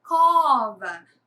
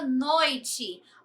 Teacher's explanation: Vá é a última sílaba e có é a penúltima sílaba. Nesse caso, a penúltima sílaba é a mais forte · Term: paroxítonas, paroxítona